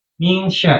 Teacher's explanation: Min sya itu makanya shin, bukan min sa ya, bukan pakai sin tapi pakainya shin. Min syarri ma syarr itu pakainya tengah lidah atau huruf shin.